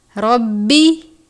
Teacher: ربی، با کے اوپر تشدید یعنی شد کی علامت ہے، با کو سختی سے پڑھیں گے لیکن زیادہ لمبا نہیں کرنا، ربی نہیں پڑھنا بلکہ ربی۔